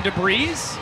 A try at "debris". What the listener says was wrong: Did you just pronounce the S in debris? Is that how it's pronounced? There's debris in the way. That doesn't feel right to me.